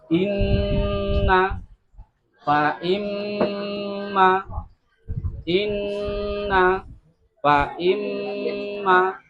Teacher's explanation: panjang atau lama dengungnya musyaddadah itu dua harakat atau dua ketukan